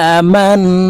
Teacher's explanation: ইয়া অফ ওয়া পেশ কু লাম পেশ লুয়াসি হামজাহ খারা জবর হামজার উপরে খারা জবর আছে তাই এই হামজাকে এক আলিফ টেনে বলবো